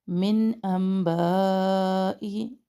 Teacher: نون ساکن کے بعد حمزہ اظہار کر رہے ہیں